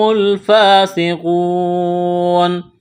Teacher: قاف واو پیش کو، واو ساکن سے پہلے پیش ہے، واو مدہ ہے، الف کے برابر کھینچنا ہے